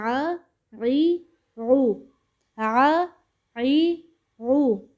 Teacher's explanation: یہ آ ای او نہیں ہے، یہ آ عی او، آ عی او. حلق کے درمیان والے حصے سے ادا ہوگا. مڈل پارٹ آف تھروٹ پہلے بھی بتا چکی ہوں.